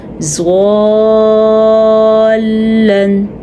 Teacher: لام پہ تھوڑا سا جھٹکا پیدا ہوتا ہے یا ایسا لگتا ہے جیسے ہم رک گئے ہیں، اس طرح تھوڑا سا رکنا ہوتا ہے۔